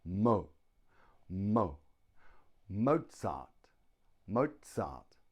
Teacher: two syllables Mozart the stress is on the first syllable